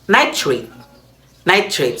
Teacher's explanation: a flame that is held in front of the lips while those words are spoken flicker more for the aspirated nitrate than the unaspirated nitrate